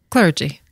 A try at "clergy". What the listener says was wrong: Soft G, darling. Clergy rhymes with largy.